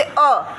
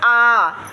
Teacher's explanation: 2 मात्रा काल का समय लगा ना, थोड़ा खींच करके बोलते हैं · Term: दीर्घ स्वर